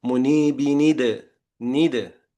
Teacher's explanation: after the noon sakin of the tanween, you add a kasra